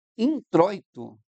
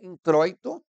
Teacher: Então, a palavra introito, ela tem um ditongo decrescente. Então, introito tem um ditongo decrescente, porque teve primeiro a vogal O e depois o I.